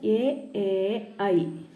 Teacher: ഇവ ഉച്ചരിക്കാൻ തൊണ്ടയുടെയും അണ്ണാക്കിൻ്റെയും സഹായം വേണം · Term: സിന്ധ്യാക്ഷരം